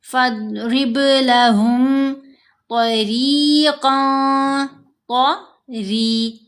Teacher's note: فاضرب لہم طریقا، ری، را کے نیچے زیر، ساتھ یا ساکن یا مدہ ہے۔ را کو باریک بھی پڑھنا ہے اور 2 حرکات کی مقدار یہاں لمبا کرنا ہے۔